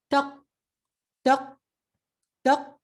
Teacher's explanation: So taq, but you will hear now that you can't hear the letter taq, taq, taq. So this letter has a jerking sound when it has a sukoon.